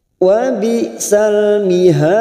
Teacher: Mihad, ada mat yang bertemu dengan huruf hidup dan dibaca waqaf, namanya mat arid li sukun. 4 harokat kita panjangkan dan ujungnya kita pantulkan karena ada huruf dal di sini yang mati di akhir kalimat, atau karena waqaf sesudah mad, namanya qalqalah kubra, kita pantulkan.